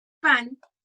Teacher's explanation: La N al final de la palabra se pronuncia de manera alveolar